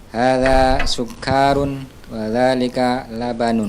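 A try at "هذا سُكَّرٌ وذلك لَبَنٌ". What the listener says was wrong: Naam, sukkarun, kafnya dipendekkan.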